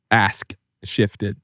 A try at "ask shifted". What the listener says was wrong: Ask. There's a K in there.